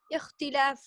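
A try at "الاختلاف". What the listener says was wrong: अल इख्तिलाफ, अलिफ लाम भी पढ़ें साथ। अल इख्तिलाफु,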